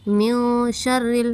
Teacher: نون کی آواز کو ایک الف کے برابر ناک میں چھپا کر پڑھیں گے · را پر زیر کی حرکت اس لیے اس کو باریک پڑھیں گے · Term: اخفا